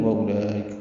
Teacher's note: وَأُولَئِكَ میں لام پر مد متصل ہے، اس سے پہلے واو نہیں پڑھنی، کھڑا زبر کے بعد حمزہ ایک ہی کلمے میں آنے کی وجہ سے مد متصل بنی ہے، مد متصل ہے اور اس کو 4 حرکات سے ہم زیادہ لمبا کرتے ہیں. حمزہ یا کی شکل میں ہے، جلدی معروف پڑھیں گے، کاف باریک ہے.